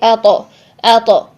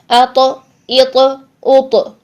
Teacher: تو کو جب ہم ساکن حالت میں ادا کریں گے تو اس کی آواز کو ہم ہلائیں گے، اپنے مخرج سے ہلا دیں گے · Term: قلقلہ